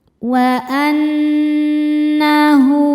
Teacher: Cara membacanya berdengung. Dengungannya tahan kurang lebih dua harakat. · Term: ghunah musyaddadah, gunnah musyaddadah